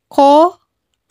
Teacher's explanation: huruf-huruf ini keluar dengan menyentuhkan pangkal lisan dengan langit-langit bagian belakang